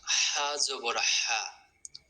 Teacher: এই হাটা একটু গলা চেপে চেপে বাতাস বের হবেন